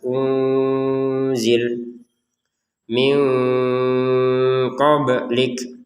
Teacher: nun sukun bertemu qaf dibaca dengan samar juga · ba yang sukun di sini bacanya dengan qalqalah kalau namanya itu. Jadi dibaca dengan pantulan. Qablik jangan dibaca tanpa pantulan.